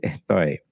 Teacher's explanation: sometimes you'll just hear the S totally dropped out, and just like this sound.